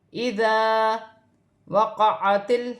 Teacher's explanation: اسے ایک الف کی مقدار کھینچ کے پڑھیں گے، جیسے اذا وقعت عین حروف حلقی میں سے الگ سے ادا ہوگا · ذال نرمی والا حرف ہے اور الف مدہ بن رہا ہے۔ الف سے پہلے زبر آ رہی ہے تو الف مدہ بنے گا۔ اسے ایک الف کی مقدار کھینچ کے پڑھیں گے